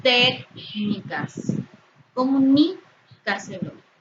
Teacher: tienen su sílaba tónica en la antepenúltima sílaba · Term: esdrújulas